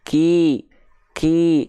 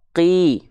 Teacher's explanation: melafalkan huruf Kaf tuh dia ada percikan nafasnya dulu